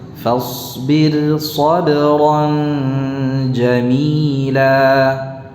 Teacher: Jadi bukan sabrang, dah. Sabran ja ya, ke makhraj jim.